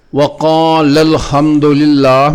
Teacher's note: اس مثال میں وقال الحمد للہ میں قالا کا آخری الف تثنیہ کا الف ہے، یہاں التقاء ساکنین ہو رہا ہے، اس لیے دوسرا الف ختم کر کے لام مفتوح کا لام ساکن میں ادغام کریں گے اور الف کے حذف کو ظاہر کرنے کے لیے نبر کریں گے، یعنی زور دے کر واضح طور پر پڑھیں گے۔